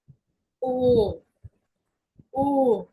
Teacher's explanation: ও উমলাউটের উচ্চারণ হবে একটু ঠোঁট গোল করে, মানে একটু টান দিয়ে ভিতরের দিকে একটু ডিপ ভাবে বলতে হবে।